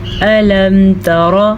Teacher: الم تر الی الذین خرجوا، الم تر، تا کو باریک پڑھیں، را کو پر پڑھیں، کیونکہ را کے اوپر زبر ہے تو را پر پڑھی جائے گی